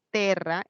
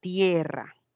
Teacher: está formada por una vocal E, que cuando evoluciona al castellano pasa esa E a convertirse en un diptongo. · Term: diptongación